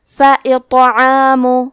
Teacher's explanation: یہاں تو کا حکم ہے قلقلہ، تو ہم یہ حرف کو ہلاتے ہوئے یہ کلمہ کو پڑھیں گے اور تو کو موٹی آواز میں بھی پڑھیں گے